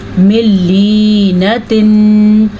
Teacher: अगर आप इसको पढ़ेंगे मिन लीनातिन तो फिर गलत है क्योंकि आपने नून को लंबा कर दिया।